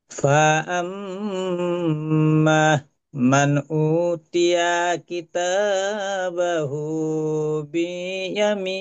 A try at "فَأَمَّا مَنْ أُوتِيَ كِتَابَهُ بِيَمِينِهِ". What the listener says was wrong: আচ্ছা হাজি সাহেব, এই আম্মা, এই মিমটা টান হবে। আর এই যে উ, হামজা অপেশ উ, ফাআম্মা মান উতিয়া কিতাবাহু বিয়ামিনি। উটা টান দেন, উ। উটা টান।